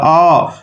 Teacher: अ का उच्चारण कंठ से होता है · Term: कंठय